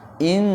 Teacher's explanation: Ah, berarti nun bertasjid itu harus dibaca gunna, ditahan dan didengungkan